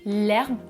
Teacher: Autre exemple, si je tape herbe, vous voyez qu'il apparaît sans astérisque. Donc, il s'agit d'un H muet. Je vais dire l'herbe avec une élision